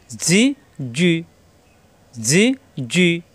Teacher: জিমজের জি, জিব্বার মাঝখানে উপরে তালুতে